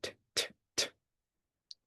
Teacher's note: My tongue is behind my teeth very similar to my N. But T, it moves quickly. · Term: T sound